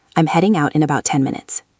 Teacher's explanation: I stress heading out and 10 minutes. Those are the important information points.